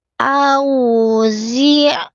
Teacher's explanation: Wau sukunya monyong tidak dibaca al auzi ni. Zainya ujung lidah sentuhkan ke pangkal gigi seri bagian bawah. Z bukan si napasnya tertahan jahar.